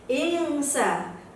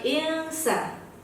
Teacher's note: Karena dia terdapat bacaan huruf ikhfa. Maka bacanya adalah samar. Tidak dijelaskan nun mati dan huruf sinnya.